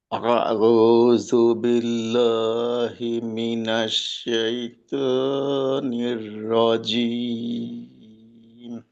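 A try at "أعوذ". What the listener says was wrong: যেমন এখনো জালের উচ্চারণটা জু হয়ে গেল। জু, এটা হলো জাল। জাল, আউযু, আউযু, এরকম আর কি।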